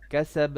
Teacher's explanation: A little bit of qalqala on the ba.